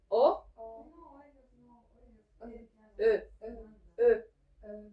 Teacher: Va a salir una e más ahogada, más profunda. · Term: e ahogada